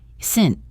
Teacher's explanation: The two T sounds can be tricky. The first T in isn't is often a stop T